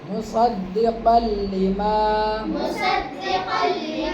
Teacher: یہاں پہ تنوین کے بعد لام آ گیا، غنہ نہیں ہوگا